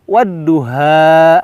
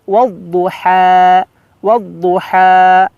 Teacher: Ha-nya di sini ha tipis. Jangan sampai kita membacanya menjadi ha besar wadduha. Nah, ini keliru jelas jauh ya.